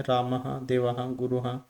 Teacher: विसर्ग इस का उच्चारण किंचित ह के समान दिखाया जाता है इसका प्रयोग स्वर के बाद होता है जैसे म है रामः